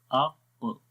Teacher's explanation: آواز اوپر کی طرف اٹھ رہی ہے اور زبان کی جڑ بھی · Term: قاف